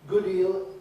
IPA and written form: ˈgʊd ˈiːl (good deal)